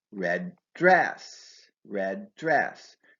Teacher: Red dress is an adjective plus noun combination, so stress goes on the noun.